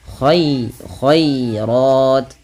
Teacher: ro-nya baru dibaca dengan tebal karena dia ra tafkhim berharakat fathah